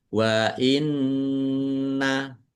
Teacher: nun tasdid bacaan gunnah dibaca mendengung ditahan biar tampak mendengungnya